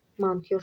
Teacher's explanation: Vurğu sona düşdüyünə görə birinci o A kimi tələffüz olunacaq.